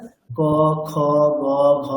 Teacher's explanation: ক বর্গের উচ্চারণ স্থান হচ্ছে কণ্ঠ